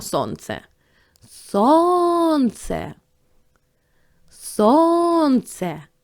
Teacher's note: перший склад ми вимовляємо з більшою силою голосу значить цей склад буде наголошений